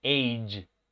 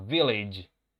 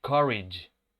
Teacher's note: Y el sonido final es un sonido que no tenemos en español tampoco, que ocurre aquí en la G. La G se pronuncia con este sonido, que es como una D y un 3. Es como una E al revés, ¿cierto?